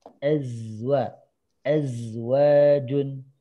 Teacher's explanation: Jangan kayak huruf S ya. Ada percampuran antara Z sama S barusan ya. Jadi kalau boleh secara translate ke Latin itu lebih dominan Z ya.